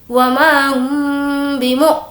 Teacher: میم ساکن کے بعد با ہو اس وقت بھی غنہ اور اخفاء ہوگا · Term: اخفاء شفوی